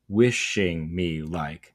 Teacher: We go stressed, unstressed, unstressed, stressed. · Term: trochee